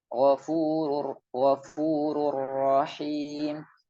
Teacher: Maka ketika mengucapkan ghafurur rahim, ru tetap ada sifat takrirnya, getaran tipis samar